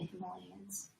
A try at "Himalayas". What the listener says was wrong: Yeah, but you said Himalayans. You mean the mountains? Not the people.